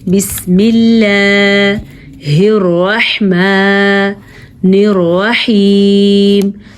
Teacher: اللہ کا نام باریک پڑھا جائے گا کیونکہ اللہ کے نام سے پہلے زیر ہے